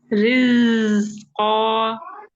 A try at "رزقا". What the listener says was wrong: نہیں، رز یہ زیادہ آپ کو نا یہاں پہ وائبریشن فیل ہوگی.